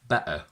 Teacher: it's extremely common for English people to say better with a glottal stop